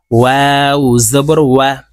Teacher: ওয়াও হরফ ঠোঁট গোল করে মাঝখানে ফাঁকা রেখে উচ্চারণ করতে হবে